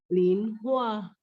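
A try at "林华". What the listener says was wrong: Hua naik nada 2. Lin Hua.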